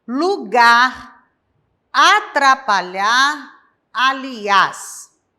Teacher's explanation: Lugar, atrapalhar e aliás, que são palavras oxítonas, onde tem a última sílaba forte